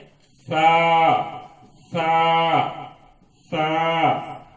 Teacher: زبان کی نوک اوپر کے دانتوں کے کناروں کو تھوڑا آگے کر کے نرم آواز کے ساتھ ادا کرنا ہے